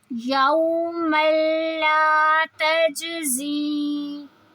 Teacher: زی کو اس لیے لمبا کر رہے ہیں کیونکہ اس میں مد ہے